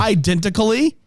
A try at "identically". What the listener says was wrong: Identically? You threw an extra syllable in there.